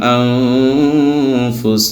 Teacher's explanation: হামজা নুন জবর আং, ফা পেশ ফু, নুন সাকিনের পরে ফা আসছে, এই জন্য এফা হবে, ঠিক আছে, এফা। এখন নুন সাকিনের উচ্চারণকে গুণনা করে লুকায় পড়তে হবে নাকের ভিতর।